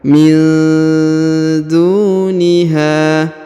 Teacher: Nun sukun bertemu da ya. Min duniha, min duniha, ya, didengungkan dan disamarkan.